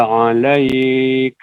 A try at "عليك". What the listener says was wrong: Alaika bukan. Panjangan.